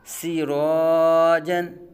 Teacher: سین باریک آ گیا، را پر زبر را پر ہوگا تو الف سے پہلے پر حرف آ گیا، اب الف کو بھی پر پڑھا جائے گا